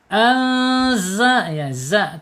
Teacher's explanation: Posisinya itu ujung lidah menyentuh gigi seri bawah ya. Ya, jadi ujungnya diturunkan ke gigi seri bawah. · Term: zai